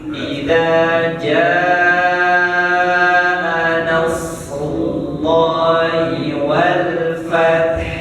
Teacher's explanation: Ujung makhraj kita tuh di ha, bukan di ta. Bukan di ta, tapi di ha.